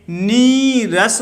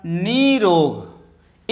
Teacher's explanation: विसर्ग का लोप हो जाएगा और ई का दीर्घ होगा, ई दीर्घ हो जाएगा